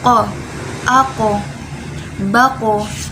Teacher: dia juga mempunyai sifat kolkolah atau memantul.